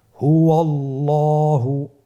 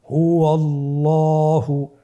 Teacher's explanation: আল্লাহ শব্দের দ্বিতীয় লামের আগেই আপনার জবর এসেছে, তাহলে আল্লাহ শব্দের দ্বিতীয় লামটিকে পোর করে পড়তে হবে।